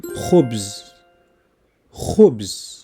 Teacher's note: from the back of the throat, like the Spanish G, as in khubz.